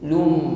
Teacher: tanwin lum kita ganti menjadi mim, lum. Ditahan dan kita sempurnakan dengan bunyi dengung. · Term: hukum iqlab